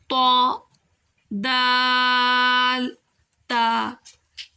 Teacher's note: त दाल ता यह अदा करते वक्त आप नोट करेंगे कि जो हमारी जुबान है वह हमारे ऊपर के जो दो दांत है सामने वाले उसके जो नीचे जड़ है यह वहां पर लगते हैं · یہ ادا کرتے وقت آپ نوٹ کریں گے کہ جو ہماری زبان ہے وہ ہمارے اوپر کے جو 2 دانت ہیں سامنے والے، اس کے جو نیچے جڑ ہے یہ وہاں پر لگتے ہیں۔